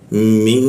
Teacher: min berwarna hijau otomatis jadi eng dia didengungkan